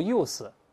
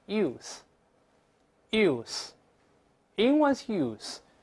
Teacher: 要吐舌头，但是声带不震动